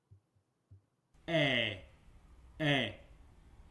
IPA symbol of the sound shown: ɛ